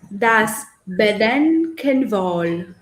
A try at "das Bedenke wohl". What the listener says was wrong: It's without N. Das Bedenke, not Bedenken. Das Bedenkewohl. And it's Bedenke. We say for this you know this sign from the international alphabet, this Schwarlaut, yeah? Das Bedenke, nicht Bedenke, Bedenkewohl.